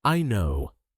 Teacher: She doesn't just say I know quietly. She says it loudly, quickly, and with excitement.